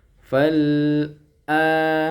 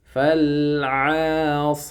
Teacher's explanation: huruf ain jangan dibaca huruf hamzah